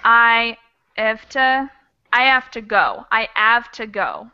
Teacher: you might drop that H